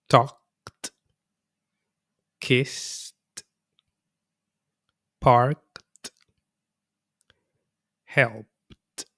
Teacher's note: Voiceless consonants. No vibration, just air passing through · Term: The t sound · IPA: /t/